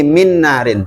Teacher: Maka terjadilah namanya hukum idgham. Jadi suaranya nun ini huruf pertama dimasukkan ke huruf kedua artinya masuk gitu. dimasukkan kemudian didengungkan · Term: idgham bighunah